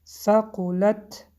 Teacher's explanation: حرف تا با سکون آمد، در اینجا حمس میکنیم یعنی کمتر هوا رو سر میدهیم